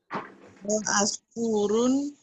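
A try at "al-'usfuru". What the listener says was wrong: Al-asfuru. Kan ada al-nya Om.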